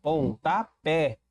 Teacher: Percebi que a última sílaba é a sílaba tônica e ela é terminada em e, é uma oxítona. oxítonas terminadas em e recebem acento.